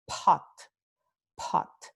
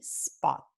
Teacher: Con pot hay mucho más aire que sale de nuestra boca. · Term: aspiración